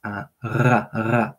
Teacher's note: It's the back of the throat. It's a r, the throat trill.